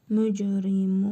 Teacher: Mim hərfində hərfi məd var. Bir əlif miqdarı uzadırıq.